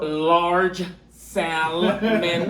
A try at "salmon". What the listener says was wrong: Salmon. There's no L. It's silent.